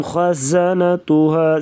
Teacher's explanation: خا کو پر پڑھیں گے موٹا، گلے سے ادا کریں گے